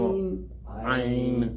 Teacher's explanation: From the middle of the throat.